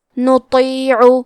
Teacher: کلمت نطیع میں حرف تو ہے، تو حروف التفخیم میں سے ہے تو ہمیں تو کو موٹی آواز میں پڑھنا ہے